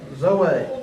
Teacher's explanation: The emphasis is on the last syllable.